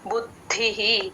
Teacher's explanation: ద కింద ద ఒత్తు మహాప్రాణం బు కి ద ని యాడ్ చేసుకొని చెప్పాలి